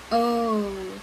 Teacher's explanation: This is a short sound. Our mouth is in a very open position and our lips are round.